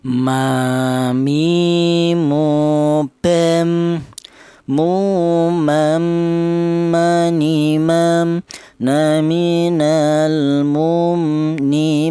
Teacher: Huruf mim ini kelnya huruf berasal dari kedua bibir yang rapat